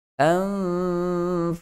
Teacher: huruf fa, 2 gigi kacip bahagian atas, sentuh pada perut bibir bahagian bawah.